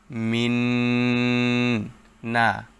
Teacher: মিন নুন সাকিনের পর ঈদগামে বা গুন্নাহর হরফ নুন আসছে তাই গুন্নাহর সাথে মিলিয়ে পড়তে হবে